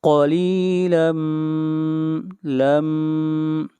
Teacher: قلیلا لم ادغام مع الغنہ، یہاں پر تنوین کے بعد میم ہے اور میم حروف یرملون میں سے ہے، ادغام مع الغنہ ہوگا۔